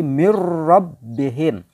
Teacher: Lam dan ro termasuk idgham bila guna. Tidak ada dengungnya. Jadi cukup membacanya nun mati dilebur masuk ke dalam huruf ro.